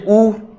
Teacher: होठ गोल हो जाते हैं और होठों से उच्चारण होता है